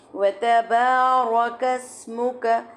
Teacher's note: را کو موٹا کریں گے، لیکن را کو موٹا کرتے ہوئے ہم نے دھیان رکھنا ہے کہ ہمارا کاف جو ہے وہ موٹا نہ ہو۔ وتبارک اسمک، ساری سنگل حرکت ہے۔